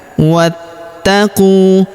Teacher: Perhatikan, wattaqu, huruf wa langsung sambung masuk ke huruf ta yang berharokat tasydid, langsung masuk ke sini. Pada huruf ta-nya kita tahan dan kita tekan karena di atasnya terdapat tanda tasydid.